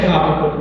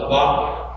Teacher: I say Habakkuk. said it right in Hebrew, the accent on the second syllable, Habakkuk. I say it the American way.